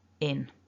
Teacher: we've got a short e and then that n which happens up in the nose